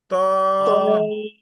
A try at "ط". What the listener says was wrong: ط মানে তায়ের মতো না। তা হচ্ছে তা, স্বাভাবিক তায়ের চেয়ে একটু মোটা হবে।